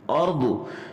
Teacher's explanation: اس میں ہم نے را کو موٹا پڑھنا ہے چونکہ اس وقت را ساکن ہے